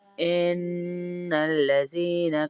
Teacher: इन्ना पे गुन्ना हो रहा है, नून मुशद्दद है। लज़ीना या मद्दा है।